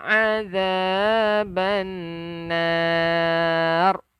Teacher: Wa qina azab, hujung lidah keluarkan sikit. Bannar, nun yang bersabdu, kena dengung. Yang dipanggil wajib al-gunnah, wajib dengung.